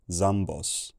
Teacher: Then this vowel in the first syllable lost its lip rounding and took a lower tongue position, jambos, and this first consonant turned into a normal sibilant fricative